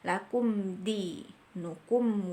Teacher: gak boleh ada dengung kita harus baca langsung jelas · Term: izhar syafawi